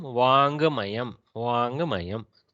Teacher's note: Almost like a little bit of Gakara is heard, but it's just under the breath. So Vakmayam here, Vakmayam, Vangmayam.